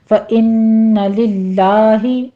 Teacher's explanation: نون مشدد ہے، غنہ واجبہ کریں گے، 2 کاؤنٹ کر کے